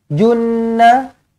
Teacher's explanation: Okey, jim baris depan, jun, bukan ja, ju, okey. Junna Nun sabdu wajibul gunnah dengungkan 2 harakat.